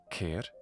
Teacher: the letter chi is the aspirated version of kappa. It basically sounds like a kappa plus an H sound.